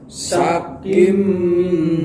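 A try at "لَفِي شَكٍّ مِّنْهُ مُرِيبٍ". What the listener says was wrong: Dengung Bapak, kim dengung. Syakkim nada mem, tanwin bertemu mem.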